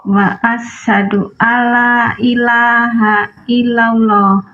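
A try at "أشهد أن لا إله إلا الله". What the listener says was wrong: wa, tapi alif. Diawali alif.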